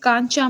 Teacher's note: पहले च च जो होता है वो अल्प प्राण होता है यानी बोलने में क्या है उच्चारण में कम समय लगता है अघोष होता है